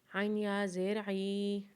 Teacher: عین کو جب یا کے ساتھ ملائیں گے تو اسے ایک الف کے برابر کھینچیں گے